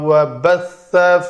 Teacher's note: بث سا کو سین نہیں بنایا